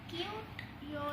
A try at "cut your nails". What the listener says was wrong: Not cute, cut. Cut